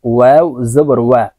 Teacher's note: ওয়াও কে ঠোঁট গোল করে উচ্চারণ করতে হবে